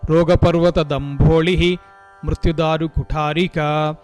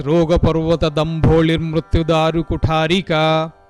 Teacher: Either you have to give visarga there, Rogaparvata Dambholihi Mrutyudaru Kutharika, or as Sandhi has occurred there, you can read it as Rogaparvata Dambholir Mrutyudaru Kutharika.